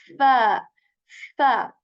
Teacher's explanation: So in fa as well, there is this fa, air, okay? So we are going to put the tip of our upper teeth onto the lower lips, and we are going to say fa by removing air from our mouths like fa, fa.